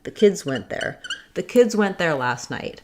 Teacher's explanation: But if I had to say, for example, the kids went there, I still need to be able to say that voiced Z sound, even though my next sound is a consonant, as in went.